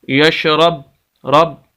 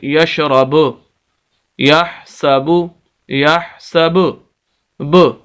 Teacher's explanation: یہ جو آخر میں آواز گونجتی ہے تھوڑی سی، یہی کلکلہ ہے